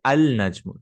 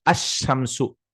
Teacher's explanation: all of the letters which are from the tip of the tongue and the blade of the tongue, you'll not read the lam, kind of. There are 14 which are solar. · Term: sun letters